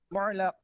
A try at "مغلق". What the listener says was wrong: مغ غین ہے یہ. غین.